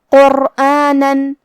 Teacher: یہاں را کا حکم ہے تفخیم کیونکہ اس پہ جزم ہے لیکن اس کے پہلے والے حرف پہ قاف پہ پیش ہے تو ہم حرف الرا کو موٹی آواز میں پڑھیں گے